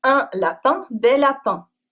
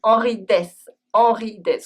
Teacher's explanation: in des, the S is always silent. If you pronounce it, it becomes the name of the Swiss singer for children, Henri Dess.